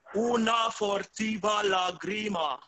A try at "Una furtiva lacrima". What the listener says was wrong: Una U. The second one is a U, non O. Furtiva. So if you think una furtiva lacrima, just put some air in your voice.